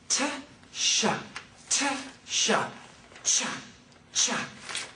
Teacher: in order to make CH, you need to begin with the t, t, t, the T sound, and the sh, sh, sh. It's a combination of both.